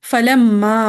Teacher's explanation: میم مشدد کا غنہ اور مد اصلی. مد اصلی.